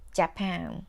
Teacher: when you say Japan in English, you put stress on pan and say it for longer than the other parts